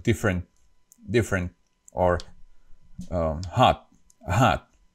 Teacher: sound is pronounced differently in the Slovak language and in English when there is the T at the end of a word like for example in the word different so the last T is not pronounced